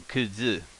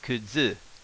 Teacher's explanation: When you do this, it turns this su into a, bear with me here, z, like a D and a Z mixed together, z. So instead of kutsu, it would have been kudzu.